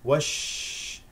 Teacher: لا تنسى صفه التفشي في الشين